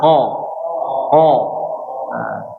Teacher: namanya isti'la, selalu mengangkat suaranya atau meningginya suara